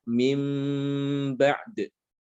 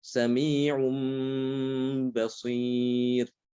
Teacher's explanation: nun sukun atau tanwin ini dia akan dibalik, ya, akan diganti, akan diubah menjadi huruf mim sukun, ya, diganti menjadi mim sukun yang nanti akan dibaca dengan ikhfa disertai dengan gunnah, ya. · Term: iqlab